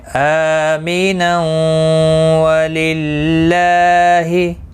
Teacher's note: اس طرح سے واو کے اوپر تشدید لگے گی، ادغام باغنہ ہوگا۔